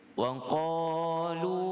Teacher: kita cuba baca daripada waqalu dengan harakat mad 2 harakat, kemudian lam dhammah dibaca panjang 5 harakat